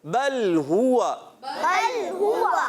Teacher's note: ہا جو ہے حلق کے نیچے والے حصے سے، اور ہا جو ہے حلق کے درمیان والے حصے سے۔ جی ہاں، ہا پر پیش ہے، ہونٹوں کو گولائی دیں گے، اور واو پر زبر آنے کی وجہ سے، چاہے واو پر زبر ہو، زیر ہو، پیش ہو، واو ہوتا ہی ہونٹوں کی گولائی سے ہے، تو جب اس کو ادا کریں گے ہونٹ گول ہو جائیں گے۔